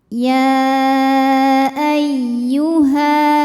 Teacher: didahului tanwin atau nun sukun maka ini tidak perlu kita tahan cukup kita gunakan naber jadi intonasi kita ditinggikan atau dinaikkan